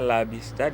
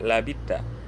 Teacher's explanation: Qiraat As-Susi juga mengidgamkan huruf sa ke dalam huruf ta.